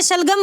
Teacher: श ध्वनि, सा से शलगम वाली जो ध्वनि है वो भी हमारी तालव्य ध्वनि है, ठीक है, श हमारी सा से शलगम क्या है, तालव्य ध्वनि है, ध्यान रखेंगे दोस्तों, इंपॉर्टेंट बातें हैं ये।